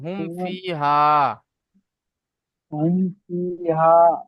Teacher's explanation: যে বাস্তবে যেটা এসেছে যে মিম সাকিনের পরেও বা এবং মিম ছাড়া অন্য অক্ষর ফা এসেছে। তাই মিম সাকিনকে বিনা গুন্না জাহির করে তাড়াতাড়ি পড়তে হবে।